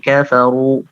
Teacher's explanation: Yang keempat yaitu ra yang berharokat dhammah, ya. Kafaru itu dibaca tebal. Tidak kafaru, tapi kafaru, ya, agak tebal.